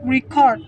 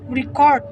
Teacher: pronouncing the word record with stress on the first syllables record indicates a noun, where stressing the second syllables record make it a verb